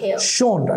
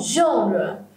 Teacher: And the stress is on the first syllable. So, genre will be pronounced in the high scale. Genre. And ra will be in the middle scale.